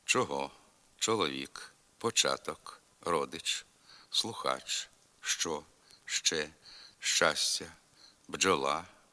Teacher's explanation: українській літературній мові шиплячі звуки ч Дж ш ж вимовляється твердо